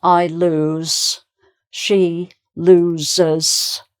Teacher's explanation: we have to have an extra syllable here for loses, because lose ends with an S sound